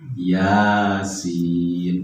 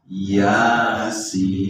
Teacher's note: Ianya 2 harokat ya, karena tegak berdiri. Kalau sinnya memang harus panjang 6 harokat.